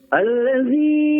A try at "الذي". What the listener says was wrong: Untuk lam tasydid, alirkan sedikit lagi ya. Jangan alladzi, tapi alladzi. Alladzi lamnya tasydid.